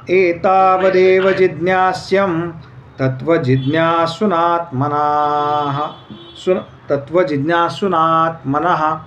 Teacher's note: आता संस्कृतमध्ये जिथे दोनदा एस आहे तर तो थोडासा दीर्घ उच्चार करायचा